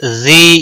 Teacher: زی یا مدہ ہے ایک الف کے برابر کھینچ کر پڑھیں گے